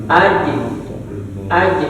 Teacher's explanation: Jim itu kadang salahnya itu keluar nafas. Jim itu gak keluar nafasnya.